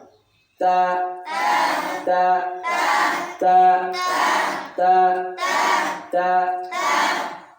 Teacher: জিহ্বার আগা উপরের দাঁতের গোড়া।